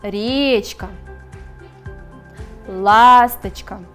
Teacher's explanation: В данных словах первый слог является ударным. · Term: первый слог ударный